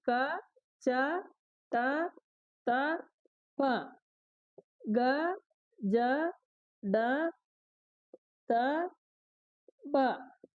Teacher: అల్ప ప్రాణాలు అంటే తక్కువ శ్వాసతో పలికేటి అన్నట్టు